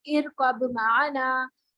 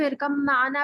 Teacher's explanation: इस पे मीम पे गुन्ना भी करेंगे, बा बिल्कुल नहीं पढ़ेंगे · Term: इदगाम